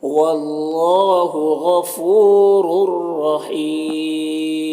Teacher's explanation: یہاں پر ادغام تام ہو رہا ہے، بغیر غنہ کے پڑھیں گے۔ وقف کی صورت میں یہاں پر مد عارض وقفی ہوگا تو اس طرح سے پڑھیں گے۔ · دونوں را کو پر پڑھیں گے، اور یہاں پر ادغام تام ہو رہا ہے، بغیر غنہ کے پڑھیں گے۔